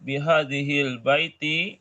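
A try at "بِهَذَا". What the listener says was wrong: bihazal, bukan bihazihil, bihazal.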